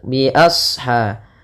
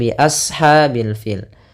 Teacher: shadnya dibaca kita tebal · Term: huruf Shad